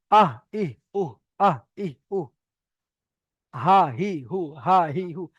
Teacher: হামজাহা হালাক বা কন্ঠনালীর শুরু হতে উচ্চারিত হয়